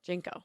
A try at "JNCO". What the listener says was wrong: I always said Junko, like with a U sound.